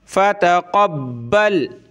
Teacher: با کو سخت کریں گے تشدید کی وجہ سے